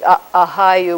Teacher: That's an ah vowel, followed by another ah vowel, with a glottal stop in between.